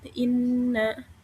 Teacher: Nah, karena huruf nun bertasydid. Jadi, cara bacanya dengung dan ditahan 3 harokat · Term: gunnah